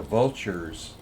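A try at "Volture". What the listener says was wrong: Like an O. It's like vulture, but with an O.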